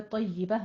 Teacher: یا کے اوپر تشدید ادا کرتے ہوئے یا کی آواز کو باریک رکھیں گے اور پر نہیں کرنا ہے